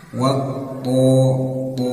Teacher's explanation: th bertasdid tekan saja dan putuskan suaranya ya harus putus Nah karena th ini bagian dari huruf syiddah yang harus diputus